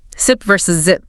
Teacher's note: S voiceless. Z voiced. Tongue behind the teeth again. Air hissing out.